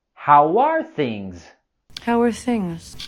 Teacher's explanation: And in the word things, we have the z sound at the end.